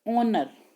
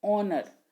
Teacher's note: sound is not H, though it begins with H